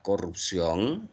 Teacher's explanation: Si la sílaba tónica está en la última sílaba, como aquí en la palabra corrupción, entonces será una palabra oxítona o conocida también como aguda. Corrupción es una palabra aguda porque su sílaba tónica está en la última sílaba.